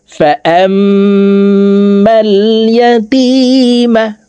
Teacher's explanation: তাসদিদওয়ালা মিমের সাথে নাকের বাসি থেকে 3 সেকেন্ড পরিমাণ গুন্নাহ করে ধরে রেখে পড়ব